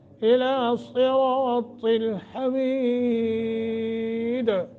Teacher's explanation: دال کو ہم نے یا وقف کیا ہے تو قلقلہ کر کے پڑھیں گے